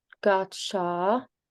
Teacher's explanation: when you get a cha and a cha, you just make it a little bit longer